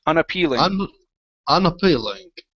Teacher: This is an E, a long E sound in the middle.